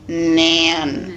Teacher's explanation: extreme nasalization of the vowel when we have a word like nan